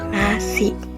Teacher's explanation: ujung lidah menempel gusi atas dan udara keluar lewat hidung, N. Nah, contoh katanya itu nasi. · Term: huruf N